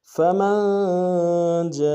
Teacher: میم کو نون ساکن کے ساتھ ملانا ہے، نون ساکن میں غنہ کریں گے